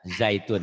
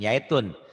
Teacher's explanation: orang Jawa kadang-kadang Z-nya ke ya